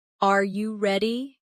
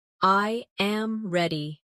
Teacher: The pitch of their voice goes up at the end.